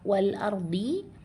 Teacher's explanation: Selanjutnya pada kalimat wal ardhi ada lamnya masih tetap dibaca jelas namanya berarti izhar qamari atau alif lam qamariah